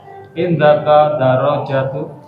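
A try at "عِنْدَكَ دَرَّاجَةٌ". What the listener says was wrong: Indaka a-nya kelewat.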